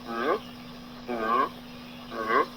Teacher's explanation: j'ai ma bouche complètement fermée et je pousse l'air au travers de mes narines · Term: consonnes nasales